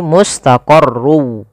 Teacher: masukkan tanwinnya huruf wau sehingga suara n-nya hilang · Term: Idam bunah